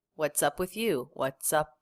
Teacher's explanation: Really quick release of the P before the W.